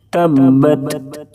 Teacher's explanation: याद रखेंगे कि जुंबिश की जो आवाज है वो थ में ना बदले। तबत इस तरह से नहीं पढ़ेंगे।